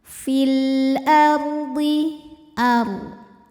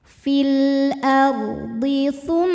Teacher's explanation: Huruf ra sukun dibaca secara tafkhim karena ra sukun didahului harokat fathah. Cara membacanya, ra dibunyikan dengan tebal.